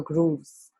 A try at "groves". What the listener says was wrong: Groves. Yeah, grooves would be two O's.